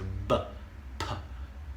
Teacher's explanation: B and P are the voiced and voiceless versions of the bilabial, using two lips, bilabial plosives.